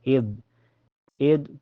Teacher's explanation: ujung lidah nempel ke ujung gigi seri atas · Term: dza